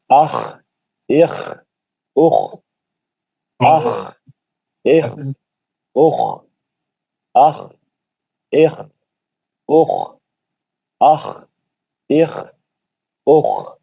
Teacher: یہ ہم اوپری حلق سے پڑھیں گے، موٹا اور باری پڑھیں گے، اور کھردرا پڑھیں گے